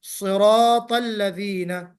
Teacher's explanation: صاد پر سیٹی ہلکی بجے گی نسبتاً سین کے مقابلے میں، لیکن تھوڑی سی سیٹی بھی بجے گی، اور اس حرف کو ہم موٹا پڑھیں گے